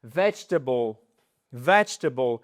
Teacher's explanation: Le E, ici, il est totalement squeezé entre les deux consonnes.